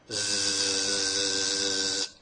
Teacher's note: Feel a vibration? Good. That's a voiced sound.